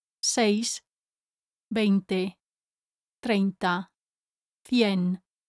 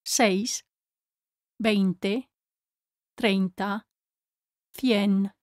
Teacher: The vowels E and I are both said. The vowel E is always longer than the I, but the I is still there. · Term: diphthongs